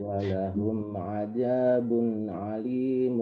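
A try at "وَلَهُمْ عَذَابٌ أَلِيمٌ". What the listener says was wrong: Nah, di alim itu. Ya, jadi mungkin dia faktor terbawa di azab ya. Walahum azab itu bujur ain, tapi di alimun itu hamzah biasa.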